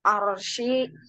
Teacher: dibaca tebal karena ro sukun sebelumnya berharokat fathah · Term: ro tafim